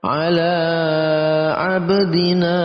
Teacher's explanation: dal berharokat sukun masuk dalam kategori qalqalah, dibaca dipantulkan